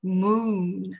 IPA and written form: muːn (moon)